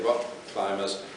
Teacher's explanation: I have that little glottal stop there, which will give the indication to any other English speaker that I'm pronouncing two Ks.